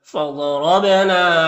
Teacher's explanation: ज़ाद हुरूफ मुस्तालिया में से पुर पढ़ेंगे, रॉ के ऊपर ज़बर रॉ को पुर पढ़ेंगे, बा में कलकला होगा